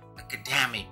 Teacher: Harusnya academic, penekanannya di dua dari belakang. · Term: word stress